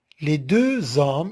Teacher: on doit marquer la liaison, elle est obligatoire